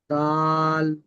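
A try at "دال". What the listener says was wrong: মানে জিহ্বাটা বের করে দেব না এরকম না করে আমরা দা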